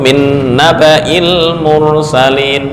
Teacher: Walaupun ada Alif tapi dari segi bacaan pendek ya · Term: pendek semua